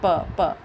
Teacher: प दोनों ओठों को मिलाना ही पड़ता है ना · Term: ओष्ठ